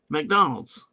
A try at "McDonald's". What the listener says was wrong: There, it's just MC, not MAC. It's McDonald's.